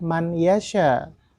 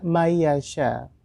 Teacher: Jadi dimasukkan ke huruf berikutnya dengan mendengung. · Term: idgham bigunah